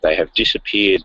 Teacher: forms when they are unstressed the H sound is dropped but when stressed the H sound is pronounced